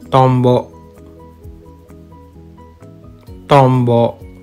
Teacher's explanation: the N syllable is pronounced as m because of assimilation this happens when the N syllable is followed by the B